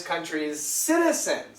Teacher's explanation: is a z sound countries and this is an S sound Z and S are similar sound so what happens why did so many people miss that because the sounds connect and we just keep the second sound